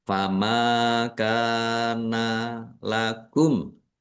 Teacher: Mim fathah alif mad thobi'i. Kaf fathah alif juga mad thobi'i. Dibaca panjang dua harakat.